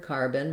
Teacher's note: First of all, looking at carbon, if I'm just saying the word carbon, my stress is on the car syllable